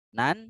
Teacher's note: Nan ada tanwin ya, menghadapi hamzah di depannya, berarti hukumnya adalah izhar ya. Izhar harus jelas.